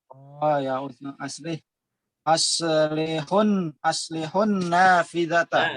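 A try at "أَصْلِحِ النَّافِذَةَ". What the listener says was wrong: Laisa doma. Aslihin ya. Nafidah. Bukan aslihun tapi aslihin nafidah ya. Jadi sukun yang pertama dikasrahkan. Aslihin nafidah ya.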